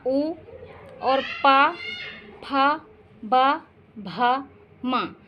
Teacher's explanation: इन वर्णों का उच्चारण स्थान ओष्ठ है